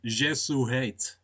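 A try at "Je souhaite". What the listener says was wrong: I think the T might be silent for French, Jesuhate, but I don't know.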